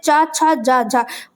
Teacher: तालव्य व्यंजन जो तालव्य से बोले जाते हैं।